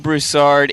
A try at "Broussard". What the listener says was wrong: Broussard. No, it's Broussard, not Broussard. The emphasis is on the ooh.